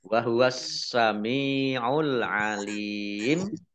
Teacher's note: Alif Lam Syamsiah karena tidak dibaca langsung masuk ke huruf Sin